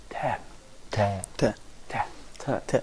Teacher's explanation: Here in the voicing states, you can find that the air stream doesn't make any kind of vibration in the vocal flaps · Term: voiceless sound